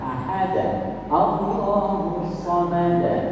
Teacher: Qalqalah itu mantulnya seperti harakat fathah